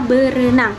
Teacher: Nah, pada kata ber ini fonem fonem r hilang sehingga menjadi hanya 1 r pada kata berenang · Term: pelepasan fonem